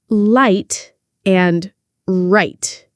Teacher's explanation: Light, tongue touching. Right, tongue not touching.